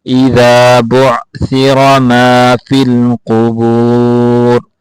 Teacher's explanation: قاف کو موٹا کر کے پڑھیں گے